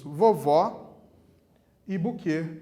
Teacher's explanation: A última sílaba de vovó e a última sílaba de buquê também é acentuada. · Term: oxítonas